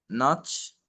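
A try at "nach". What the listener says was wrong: السي اتش هنطقها خ.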